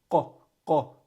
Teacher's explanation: Qaf is at the back of the tongue. So the back of the tongue touches the roof of the mouth.